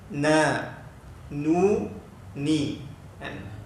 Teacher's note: menyebut huruf nun, dia punya kesempurnaan dia 50% suara keluar ikut hidung, 50% suara keluar ikut mulut. · Suara yang keluar ikut khayshum, suara yang keluar ikut rongga hidung. Suara yang keluar ikut rongga hidung, khayshum dia panggil. Ini gunnah.